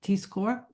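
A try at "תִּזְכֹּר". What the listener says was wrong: Yeah, that's a cholam next to a revia.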